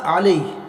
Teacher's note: अलै जो है ये याए लीन है इसलिए इसको नरम आवाज़ से जल्दी पढ़ेंगे